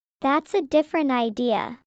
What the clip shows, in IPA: ˈdɪfrənt